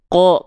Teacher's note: Ini ada huruf qaf. Huruf qaf ketika berharokat fathah dibacanya bukan ka, tapi condong pada vokal O. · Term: huruf yang tebal